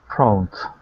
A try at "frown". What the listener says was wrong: Okay, now you're adding a T at the end, saying frownt. Okay, this is aun. Frown.